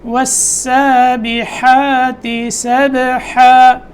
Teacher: با میں قلقلہ اور حا حلق کے بیچ میں سے